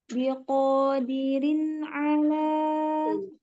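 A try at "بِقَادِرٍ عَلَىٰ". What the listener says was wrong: Jangan dibanting rinnya, jangan rin biqadirin ala. Ya karena dia itu pendek itu. Dirin kan dinya kan pendek, kasroh dal kasroh dirin. Bukan dirin enggak panjang kan?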